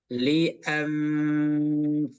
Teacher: Ini ada hukum nun mati ketemu dengan fa, disamar-samarkan dan ditahan.